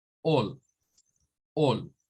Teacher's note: Significa que, bueno, En este caso, voy a repetir esto para que quede claro. Miren, la combinación aquí escrita es una AL, pero al momento de pronunciarla va a sonar como una especie de O con L